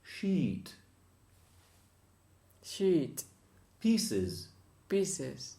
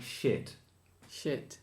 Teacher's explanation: E is the phonetic E, like in Spanish, piña colada, but it's double length. The two dots after it means double length.